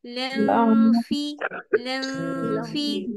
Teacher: فا کے مخرج پہ باریک اخفا کریں گے